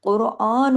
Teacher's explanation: कुरआन, हम देखिए ऊपर खड़ी जबर है, अलिफ के बराबर खींचेगा, नून पेश नू एक हरकत ही पढ़ा जाएगा, इस नून की आवाज को लंबा नहीं करेंगे।